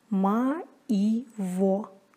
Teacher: Не произносится также звук «й» между гласными, если после него стоит звук «и». Например, «ма-и-во» – «моего». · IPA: [maivo]